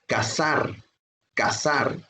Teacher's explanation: cazar también es una palabra aguda termina en la consonante r su sílaba tónica es la última